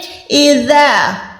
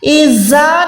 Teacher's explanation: زال جو ہے ایک ہوتا ہے زا، زا شارپ یعنی سیٹی والا حروف ہے، لیکن یہ جو زال ہے اس کی ادائیگی کرتے ہوئے آپ نے زبان کو تھوڑا سا باہر نکال کے اوپر والے دانتوں سے ٹچ کریں گے تو یہ نرمی سے ادا ہوگا